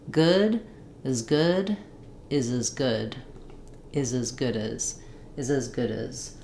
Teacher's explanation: it's almost like that Z just links right onto the end of good. So good is a content word.